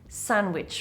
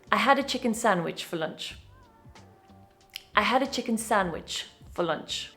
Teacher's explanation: This can also happen within a word, like sandwich, for example. The D is dropped in fast pronunciation because the cluster NDW, sandw, is awkward in fast speech.